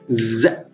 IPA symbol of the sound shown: z